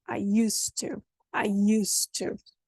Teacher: You don't hear any D in the middle, do you? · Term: elision